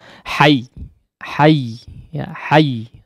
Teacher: ada penekanan suara di situ pada huruf ya-nya